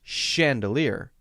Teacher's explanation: about spelling for example the word chandelier is spelled CH but notice when I say the word chandelier that it has an SH sound